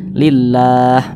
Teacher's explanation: maka kalimat Allah ini dibaca tipis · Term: tarqik